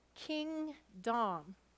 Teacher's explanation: we're giving equal stress to the syllables and clearly articulating each of those vowels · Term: say to spell